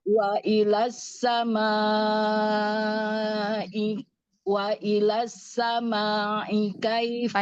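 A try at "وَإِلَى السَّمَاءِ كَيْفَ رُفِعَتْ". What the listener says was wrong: panjangin. Mat wajibnya panjangin.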